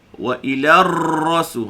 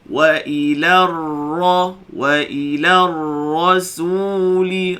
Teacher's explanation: jangan getarkan ra dengan getaran yang boleh dibilang